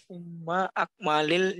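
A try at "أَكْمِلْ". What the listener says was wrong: Akmil bukan akma, akmil.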